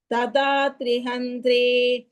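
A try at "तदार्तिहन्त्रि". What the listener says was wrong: ததாத்ரி கிடையாது. த்ரீ சொல்லாதீங்க. ததார்த்தி.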